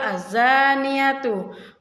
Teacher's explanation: terdapat alif lam mati yang bertemu dengan salah satu huruf Syamsiah dibaca lebur atau idgham sehingga bunyi al-nya tidak terbaca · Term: alif lam syamsiah